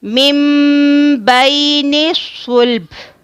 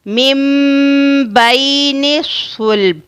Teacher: نون ساکن کے بعد با ہے تو ہم نے یہاں پر نون ساکن کو میم میں بدلنا ہے اور پھر با ادا کرنا ہے، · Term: اقلاب